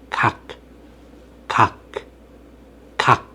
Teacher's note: For example, when you say 각, 각, 각, you close off the airflow at the back of your throat.